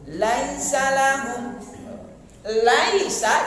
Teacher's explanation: Lai itu sudah dua ketuk